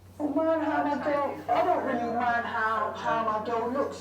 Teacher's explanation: near monothongal pronunciations of goat and face vowels and a monothongal price vowel